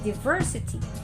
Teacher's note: Diversity is stressed on the second syllable